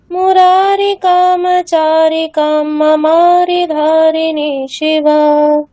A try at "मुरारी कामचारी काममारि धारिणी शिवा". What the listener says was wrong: একদম ঠিক আছে।